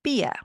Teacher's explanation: I hope you noticed that German does not have an R sound like American English does.